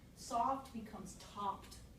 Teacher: Kid just changed the manner of articulation, made a fricative a stop, done.